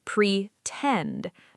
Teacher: The stress is on the second part